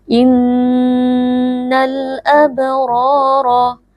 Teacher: ghunah yang ditahan sebentar atau dengung yang ditahan sebentar Innal Abror alif lam alqamariyah karena alif lam bertemu dengan Hamzah